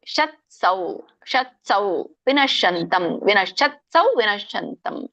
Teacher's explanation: ಸ ಮತ್ತೆ ವ ಕ್ಲಿಯರ್ ಆಗಿ ಹೇಳಬೇಕು ತ ಮಾತ್ರ ವ್ಯಂಜನ ಕೊಡಬೇಕು